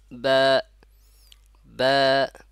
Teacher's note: বা, বা, বা বলবো না, বা দুই ঠোঁট থেকে, দুই ঠোঁটের পেট থেকে উচ্চারণ হয় বা